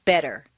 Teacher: the Double T in better is pronounced d better any other pronunciation will sound foreign strange wrong or different